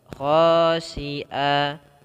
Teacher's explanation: kha tebal karena di sini ada mad tabi'i 2 harakat, khasi'a, mad tabi'i, khasi'awa.